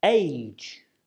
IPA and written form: eɪdʒ (age)